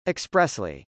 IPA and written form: əksprˈɛsli (expressly)